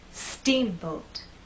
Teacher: I want the first part to be loud and the second part to be softer · we also need to make that first part longer, and then the second part will be shorter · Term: stressed part